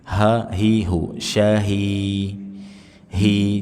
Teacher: Hak biasa yang keluar dari tenggorokan bagian bawah atau aqsa alhalqi tanpa berlebihan di dada. Meskipun dia pasti lewat dada tapi tidak perlu berlebihan. · syahi hi jangan ke e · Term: hak besar